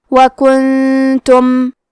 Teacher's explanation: ہم نون ساکن کو چھپاتے ہوئے اور غنہ کے ساتھ یہ حکم کو ادا کریں گے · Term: اخفاء